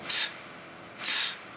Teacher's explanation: the T it's not just a T sound. There's like a hissing to it. It's like t, t.